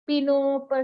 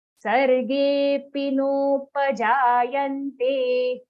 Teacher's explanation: So you can see I'm joining P to no.